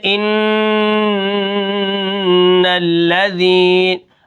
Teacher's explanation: وقفاً ان الذین، یہاں پر نون مشدد ہے تو میں یہاں پر غنہ کروں گا، اور جیسا کہ میں نے آپ کو پہلے بتایا ہے کہ جب کوئی مشدد حرف ہوتا ہے تو ہم اس کو دو حرفوں جتنی دیر لگاتے ہیں، لیکن یہاں پر دیر کچھ زیادہ لگ جائے گی کیونکہ یہ نون مشدد ہے اور اس کو ایک الف کے برابر اس کے اندر ہم نے غنہ کرنا ہے